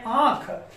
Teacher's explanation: उच्चारण करते समय वायु मुख और नासा द्वार से प्रवाहित होती है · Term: अनुनासिक